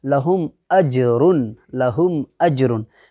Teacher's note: میم ساکن کے بعد با اور میم کے علاوہ دوسرا حرف ہے، جو کہ قاعدہ ہم پڑھے ہیں کہ با اور میم کے علاوہ اگر دوسرا کوئی بھی حرف آئے گا تو اظہار شفوی ہوگا، اور میم ساکن کی آواز کو ظاہر کر کے بلا گنہ کے جلد پڑھیں گے، تو یہاں پر میم ساکن کی آواز کو ظاہر کر کے پڑھ دیں گے، گنہ وغیرہ نہیں کرنا، یعنی آواز کو روکنا نہیں ہے بلکہ صاف طور پر میم ساکن کے جو میم کا جو مخرج ہے وہ مخرج کے ساتھ ادا کر کے ڈائریکٹ بول دینا ہے۔